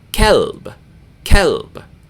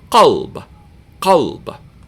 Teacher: Ka is pronounced in the middle of your mouth. Qa is pronounced in the back of your mouth.